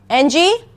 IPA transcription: ŋ